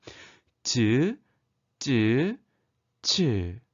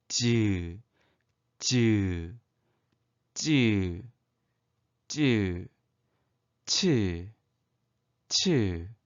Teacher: 혓바닥이 센 입천장, 단단한 입천장에 살짝 닿았다가 소리 납니다. 그런데 이게 아주 짧은 순간 닿고 그 다음 부분이 떨어지면서 공기가 좁아진 사이로 마찰도 일으키며 내는 소리입니다. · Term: 파찰음